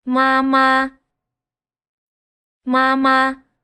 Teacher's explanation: Hopefully, if your ears are sharp by now, you might have noticed that they're both the same tone, both ma ma, both high flat tones